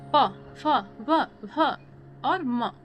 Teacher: जिन व्यंजनों के उच्चारण में दोनों ओठों द्वारा श्वास अवरोध होता है, ओष्ठ व्यंजन कहलाते हैं। · जैसे प, ह, प, भ और म, क्या है, ओष्ठ व्यंजन। बोलते हैं तो दोनों लिप क्या है, टच भी हो रहे हैं और थोड़ा वायु भी तो निकल रहे हैं ना